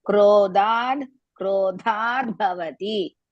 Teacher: Dha, another dha is half. There are two das you have to pronounce. Krodhad, one is mahaprana, the other one no mahapranas, but only half dha. Bhavati, ha, again mahaprana.